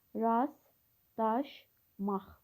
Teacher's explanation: Rastlaşmaq sözündə t samiti tələffüz zamanı düşür. L samiti D kimi tələffüz olunur. Sonuncu Q samiti isə X kimi tələffüz olunur. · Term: Səs düşümü